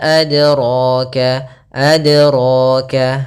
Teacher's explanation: ro-nya kita panjangkan 2 harokat. Maka kita namakan dengan mad tabi'i, yaitu adanya fathah bertemu dengan huruf alif.